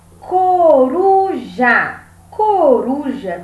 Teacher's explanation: Coruja tem a penúltima sílaba mais forte, que é o ru. Então, toda vez que você ler uma palavra em que a penúltima sílaba for a mais forte, ela é uma palavra paroxítona, como é o caso da palavra coruja.